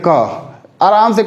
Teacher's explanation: अब इसको देखिएगा, जब भी बोलिएगा ना, जब भी क बोलेंगे, क आराम से क निकल जाता है, इसमें ज्यादा वायु और ज्यादा प्रेशर लगाने की आपको जरूरत ही नहीं पड़ती है, आराम से क। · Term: अल्प प्राण